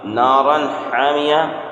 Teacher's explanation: نارا حامیہ، یہاں پر اظہار دو زبر تنوین کے بعد حروف حلقی کے 6 حروف میں سے ہا ہے، اس لیے دو زبر تنوین کی آواز کو ظاہر کر کے پڑھیں گے